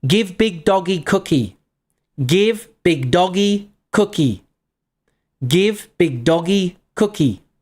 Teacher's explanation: one of the most common ways that babies make sentences early on is that they drop unstressed function words.